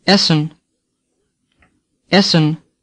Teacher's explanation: the first e is open as in Berlin the second E is like the sound a in women